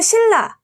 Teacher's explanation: 뒤에 있는 리을의 영향을 받아서 니은이 리을로 변한 류화